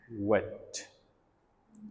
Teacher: टंग का जो middle portion है, ठीक है, it comes closer टू hard palate, वेट। क्या कहते हैं कि ना, तो दोनों लिप्स एंड देन वेट, जबान कर्व हो रही है, दरमियानी हिस्सा और हार्ड पैलेट की तरफ जो है वो जा रही है।